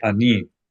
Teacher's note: Ani, accent on the final syllable.